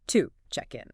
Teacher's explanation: To the schwa sound. That little neutral uh sound. So to check in becomes to check in. · to isn't pronounced with its full strong ooh vowel sound like if you said the word to. Instead, it gets reduced.